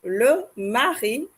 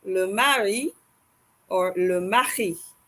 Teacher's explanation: The R in French is guttural.